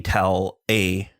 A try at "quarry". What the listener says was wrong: Quarry? Well, you said query? This is your vowel thing again. He has a vowel thing.